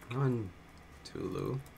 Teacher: when it's the noun, it's the first part that gets the stress